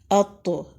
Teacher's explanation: زبان کی نوک اوپر والے دو دانتوں یعنی ثنایا علیہ کی جڑ سے لگ رہی ہے۔ تو حروف قلقلہ میں سے بھی ہے، یعنی جب تو کو ساکن کریں گے تو مخرج کے دو حصے ملا کر چھوڑ دینے ہیں۔